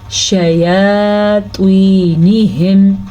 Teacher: توا کو پر پڑھیں گے کیونکہ توا ہمیشہ ہی پر پڑھی جاتی ہے. یا کے اوپر کھڑی زبر ہے کھڑی زبر آپ نے لمبی کرنی ہے لیکن شین کے زبر کو آپ نے لمبا نہیں کرنا